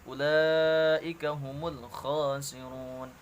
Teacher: Kemudian ulaika humul khasirun, la-nya panjang, ya. Di situ terdapat mad wajib muttasil, harus dibaca panjang 5 harakat.